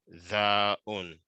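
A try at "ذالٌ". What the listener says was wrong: It ends with lun. L-U-N.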